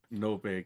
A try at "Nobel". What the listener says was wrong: Did you call it Nobe? It's spelled Nobel.